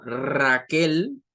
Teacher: palabras que sobre todo en el español que comienzan con la letra r como Raquel que es un nombre propio y que tiene la r fuerte al principio